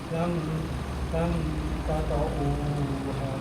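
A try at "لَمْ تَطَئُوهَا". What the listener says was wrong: kepanjangan. Lam tata'uha.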